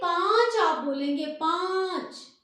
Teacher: इसमें वायु जो है वो नाक से भी निकल रही है और मुंह से भी निकल रही है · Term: चंद्र बिंदु